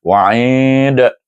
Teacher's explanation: oleh kerana dal itu huruf yang akhir itu disukunkan adalah huruf qalqalah, bila sukun dia akan melantun. Dibaca dengan qalqalah kubra.